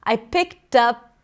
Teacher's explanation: the P becomes the beginning of the next word, a lot. I picked up a lot.